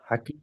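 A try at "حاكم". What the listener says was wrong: ওখানে একটা টান ছাড়া যাচ্ছে। মিম ওটা হা নয়, মিম।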